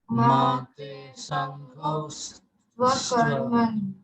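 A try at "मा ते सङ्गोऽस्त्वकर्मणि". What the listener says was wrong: Exactly. Yes, that's right.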